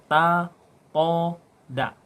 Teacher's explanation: ujung lisan bertemu dengan pangkal 2 gigi atas